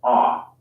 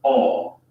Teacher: In the word stop, the American O sound is an unrounded vowel, ah, while the British O sound is rounded, aw